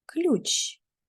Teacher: В слові ключ звук л звучить м'ягко. тому що його пом'якшує ю в слові ключ один склад.